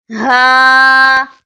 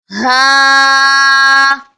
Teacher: Ha comes from the back of the throat to pronounce Ha